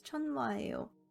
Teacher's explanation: When hiet falls between any combination of vowels, 를 or the nasal consonants, 미음, 니은, and 이응, hiet becomes silent. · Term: hiet weakening